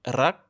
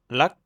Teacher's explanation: L'équivalent du R en thaï, c'est un R roulé avec la pointe de la langue, comme en espagnol ou en italien. Si vous avez du mal, bonne nouvelle, c'est complètement optionnel, vous pouvez aussi le prononcer comme un L.